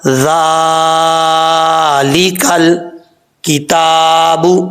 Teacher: تا کے اوپر کھڑا زبر ہے، ایک الف کی مقدار، اس کو لمبا کر کے پڑھیں گے۔